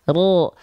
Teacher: bukan bertumpu pada bagian luar organ mulut kita ro tidak tapi ro pangkal lidahnya yang naik di dalam